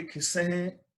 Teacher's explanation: ਉਸ ਦਾ ਉਚਾਰਨ ਨਾਸਕੀ ਹੋਏਗਾ, ਬਿੰਦੀ ਲਗਾ ਕੇ